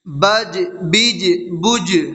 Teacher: جیم حروف قلقلہ میں سے ہے اور جیم کے اوپر جزم ہے تو اس میں قلقلہ ہوگا